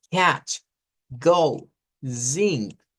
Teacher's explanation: sonidos como la letra k la G y el sonido de la ng por ejemplo Catch Go zink son sonidos velares